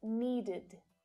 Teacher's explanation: these words correctly firstly Ed can be pronounced as ID so this is an unstressed vowel sound and it creates an extra syllable which is always unstress so the sound is short and it's